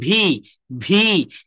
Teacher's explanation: উপরের দাঁতের অগ্রভাগ দিয়ে নিচের ঠোটের অগ্রভাগ